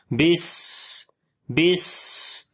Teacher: سین کے اندر کیسے سیٹی کی آواز بھی آ رہی ہے، سانس بھی جاری ہو رہا ہے، بس بس۔ تو یہ صفت ہمس اس کو بولتے ہیں، سانس جاری ہونا، صفت صفیر، سیٹی کی آواز۔